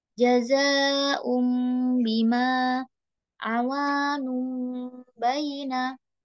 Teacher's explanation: nun sukun bertemu ba di sini ketika kita masuk huruf ba ini langsung seperti terdengar huruf mim ya. Masuk dengan mengubah menjadi huruf mim. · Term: iklab